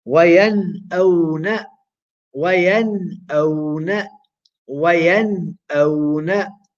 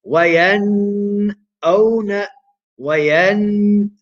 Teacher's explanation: We make the nun sākina short, sharp, and clear.